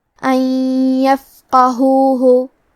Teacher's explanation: کلمت ان کے آخری میں نون ساکن ہے، پھر حرف الیا ہے کلمت یفقہوہ، یا حروف الادغام بغنہ میں سے ہے، اور ادغام کا معنی ہے حرف کو حرف میں داخل کرنا، تو ہم نون ساکن کو یا میں ملا کے غنہ اور تشدید کے ساتھ یہ حکم کو ادا کریں گے